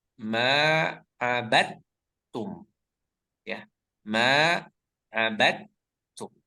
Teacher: Abad itu di sana ada dal sukun kemudian bertemu dengan ta yang bertasydid. Maka kita baca melebur langsung ke huruf ta ya. Jadi jangan abad tapi langsung melebur ke huruf ta.